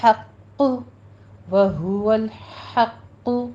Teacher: ہا باریک پڑھی جائے گی وسط حلق سے، قوف کے اوپر آپ نے سختی کرنی ہے اور قوف کو پر بھی پڑھنا ہے۔